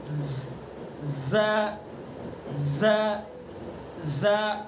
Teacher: زبان کی نوک ثنا سفلا کا کنارہ اور کچھ اتصال ثنا علیہ سے